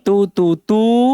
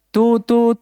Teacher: dibaca panjang biqadri ya biqadri dengan takaran harakataini dua hitungan, dua harakat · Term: wau maddiyah